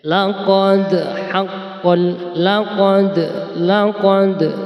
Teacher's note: langsung saja kita ke tajwidnya laqod ini adalah bacaan qalqol sugro ada Dal yang mati asli di tengah kata di tengah kalimat ya di tengah ayat maka harus kita pantulkan cara bacanya